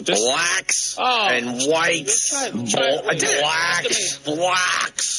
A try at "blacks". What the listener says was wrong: Just you're saying it like brack almost. BLACKS. Just say black.